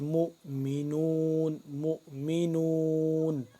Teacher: میم مل رہا ہے اس حمزہ کے ساتھ، جب حمزہ کے ساتھ ملے گا تو یہ کیا ہوگا، ہلکا سا جھٹکا دے کے پڑھیں گے